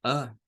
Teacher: como article, este tiene el sonido schwa. Suena a.